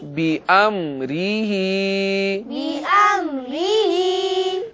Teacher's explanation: حمزہ کو میم کے ساتھ ملاتے ہوئے صحیح طریقے سے ادا کریں گے تاکہ اس کی آواز عین کے ساتھ نہ ملنے پائے۔ اور میم ساکن ہے، یاد رکھیے گا کہ میم بھی حروف قلقلہ میں سے نہیں ہے، اس لیے اس میں بھی لوٹتی ہوئی آواز نہیں آئے گی۔